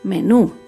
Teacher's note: Menú se acentúa en la última sílaba, menú. Las palabras agudas llevan tilde si terminan en vocal A, E, I, O, U y en las consonantes N, S.